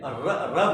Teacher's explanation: जीभ का नोक आगे वाला भाग ऊपर उठ कर के घूम रहा है मतलब मुड़ रहा है इसीलिए इसको कहते लुंठित माने लुढ़कना जीभ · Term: लुंठित व्यंजन